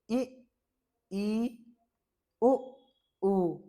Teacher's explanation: तो देखिए हम बताते हैं कि संवृत स्वर क्या होता है? संवृत स्वर वह स्वर होता है जिसके उच्चारण में मुंह बहुत कम खुलता है